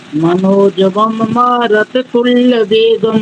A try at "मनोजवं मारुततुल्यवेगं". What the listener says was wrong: मारत नहीं, मारुत तुल्य वेग।